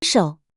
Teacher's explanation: Third tone dip, then rise.